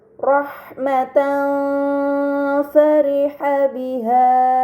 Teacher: harakat fathahain bertemu dengan huruf Fa ini dinamakan ikhfa Hakiki maka fathahain dibaca secara samar dengan gunah yang dipanjangkan